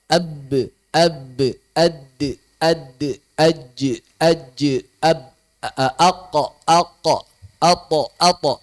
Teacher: Sedangkan saat kita mengucapkan qalqalah maka pita suara bergetar.